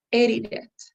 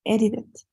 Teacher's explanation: you have to stress the word in the first part, in the first syllable. So it's edited.